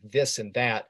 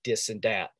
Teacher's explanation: some people instead of saying this and that will say dis and dat